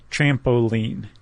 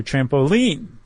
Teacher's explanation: So it's stressed, unstressed, stressed, like trampoline. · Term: cretic